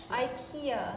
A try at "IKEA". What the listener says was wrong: Yeah, America says the E-A part more similar to the Swedish, but you pronounce the I. E.